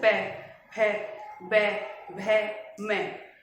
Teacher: उसे बोलने में हमारे होटों का प्रयोग होता है